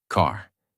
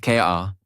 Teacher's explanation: It is fully pronounced. Your tongue moves slightly back. Your mouth stays relaxed and the sound comes from inside not from the lips. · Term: American R sound